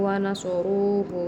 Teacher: Wa nasaruhu juga dihukumi dengan bacaan tafhim tebal karena ada huruf ro berharokat dhammah.